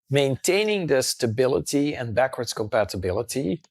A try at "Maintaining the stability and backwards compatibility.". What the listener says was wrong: He is obsessed with these T's. I mean, it's so distracting when you pronounce all your T's perfectly, especially when you have these words that finish with ity, the unstressed. Stability, compatibility, right?